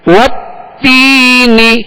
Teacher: یا مدہ ہے, ایک الف کی مقدار کھینچیں گے اور نون کو بغیر کھینچے بغیر جھٹکا دیے اس کی زیر کو معروف طریقے سے ادا کرنا ہے.